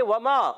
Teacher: واو ادا ہوتے ہیں ہونٹوں کی گولائی سے